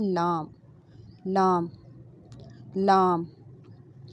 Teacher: جب دواحق سے لے کر ثنایا تک دانت جو ہیں وہ زبان سے ٹچ کریں گے تو لام ادا ہوتا ہے